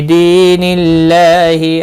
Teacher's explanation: اللہ کا لام زیر کی وجہ سے باریک پڑھا جائے گا، اس کے اوپر کھڑی زبر ہے، 1 الف کے برابر کھینچ کر پڑھیں گے۔